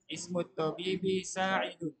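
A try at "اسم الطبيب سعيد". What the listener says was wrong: Hmm? Ainnya yang panjang. Ismut tabibi Sa'idun. Ismut tabibi Sa'idun. Wawnya hilangkan aja wawnya. Bukan wasmu, tapi ismu aja.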